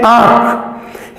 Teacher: यहां इन दोनों के बीच में हम कोई ध्वनि यहां पर इसका उच्चारण नहीं होगा, यानी आ के बाद और ख के पहले कोई ध्वनि नहीं होगी, · यहां पर इस आंख को चंद्र बिंदु इसके ऊपर लगा है, इस आ को ही हम नाक के सहयोग से बोलेंगे। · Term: अनुनासिक